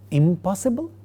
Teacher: The initial sound of the word possible, pa, makes the negative prefix end with ma, and therefore we get the word is impossible. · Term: labial nasal